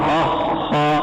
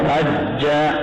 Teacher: अखा में आवाज जारी है और अज्जा उसमें आवाज बंद होकर जारी हुई, वो शिद्दत की वजह से और यहाँ रिख्वत की वजह से।